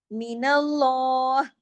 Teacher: اللہ کے نام سے پہلے زبر ہے، لام ہیوی